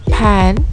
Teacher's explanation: manner of articulation the first one at the beginning of pan is a voiceless bilabial stop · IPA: [p]